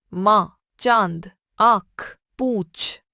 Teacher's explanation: जिन वर्णों का उच्चारण करते समय वायु नाक तथा मुंह दोनों से निकलती है उन्हें अनुनासिक कहते हैं। अनुनासिक को चंद्रबिंदु भी कहते हैं।